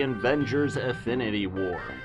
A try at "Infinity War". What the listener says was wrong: Infinity Wars. No, you said Affinity Wars. It's Infinity Wars because of the Infinity Stones.